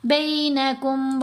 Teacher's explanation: لین حروف کو نرمی سے پڑھا جائے گا اور ان کو لمبا نہیں کرنا، ان کو جھٹکا بھی نہیں دینا۔ زبر زیر پیش جیسی آواز بھی نہیں پڑھنی، درمیانی سی ٹیڑھی سی آواز بنے گی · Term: یا لین